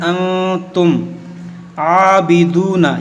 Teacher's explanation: یہاں پر آپ کو ناک میں آواز لے جانا ہے